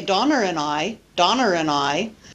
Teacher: he used linking r at the end of my name to connect it to another word · linking with r is not typical in American English · very often they use R to link vowel plus vowel and in linguistics this phenomena of linking with r is often called intrusive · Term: intrusive are